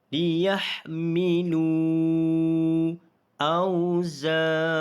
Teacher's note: milu, di sini kita baca dengan panjang dengan kadar 5 harakat kerana mad asli huruf waw ini bertemu dengan hamzah dalam 2 kalimah. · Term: mad jaiz munfasil